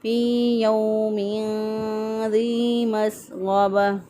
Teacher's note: दाल दर यादी या मद्दा है, या साकिन से पहले वाले हरफ के नीचे ज़ेर एक अलिफ के बराबर लंबा करेंगे